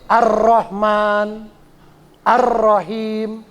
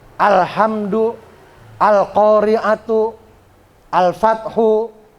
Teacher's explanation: Kalau al syamsiyah itu bunyi alnya tidak terbaca. Tapi kalau al qamariyah alnya terbaca, hidup.